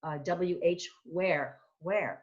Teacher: it's almost like an h sound before